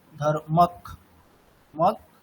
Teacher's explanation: মানে ককারটা দুবার উচ্চারিত হচ্ছে